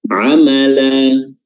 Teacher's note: Di sini ada lan yang mestinya bacanya lan amalan, tapi karena dia waqaf, dia berubah, berganti menjadi mad, dua harokat, namanya mad iwad.